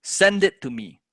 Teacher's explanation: So for example, if we're going to say, send it to me. So you're going to naturally stress on the word send.